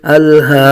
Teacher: حمزہ لام زبر ال، ہا کھرا زبر ہا، کھرا زبر قائم مقام الف مدہ، ایک الف تک کھینچ کے پڑھیں گے۔